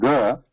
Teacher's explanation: sound there when we say G we have the s or constriction in the throat and because of that vibration happens because of that the sound is produced so that is how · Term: constricted throat